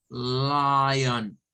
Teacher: el sonido de la ON es un schwa, es un on. No es on, no es lion, no es lion, on.